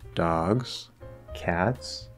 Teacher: The pullback effect, in this case, again, it's abstract, it's not hesitation, but you're sort of spending maybe just a little bit of extra time or giving just a little bit of extra intonational focus by falling on that item and then rising to go into the next one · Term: fall rise